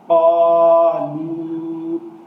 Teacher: دونوں لمبے کر کے پڑھے جائیں گے کیونکہ دونوں حروف مدہ ہیں۔ قاف زبر الف قا، لام پیش واو لو، قالو۔